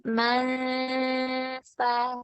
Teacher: Jadi kayak suara hidungnya itu lebih banyak daripada di bibir.